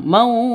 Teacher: Jadi dipantulkannya ke huruf jimnya, huruf qalqalahnya. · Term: qalqalah kubra